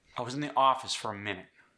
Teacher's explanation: Office and minute are my stress syllables. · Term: anchor syllables